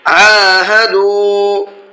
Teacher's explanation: عین کو حلق سے بھی نکالنا ہے اور ساتھ ساتھ کھینچ کر کے بھی پڑھنا ہے، اس لیے کہ عین کے اوپر کھڑا زبر ہے، اور دال کو بھی کھینچ کر کے پڑھنا ہے بعد والے، اس لیے کہ یہاں پر واو مدہ کا قاعدہ ہے، واو ساکن ہے اور اس سے پہلے پیش ہے۔